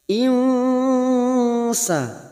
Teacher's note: nun sukun bertemu Sin ikhfa Hakiki kita samarkan bunyi nun sukun tiga harakat